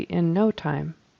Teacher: we would always say it like this with the emphasis on the word no in no time um we would just never say in no